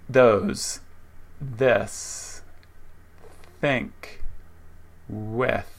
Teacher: Notice the tongue comes to the teeth and a thin stream of air is released. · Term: TH consonant sound